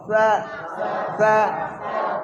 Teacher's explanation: সিটি উচ্চারণ হবে না, সা এই সিটিটা উচ্চারণ হবে না, তোতলা ভাব